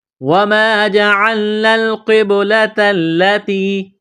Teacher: یہاں الف سے پہلے زبر ہے، حروف مدہ الف ہے، 1 الف کے برابر کھینچنا ہے ، قاف کو موٹا کرنا ہے، بڑا قاف ہے، با ساکن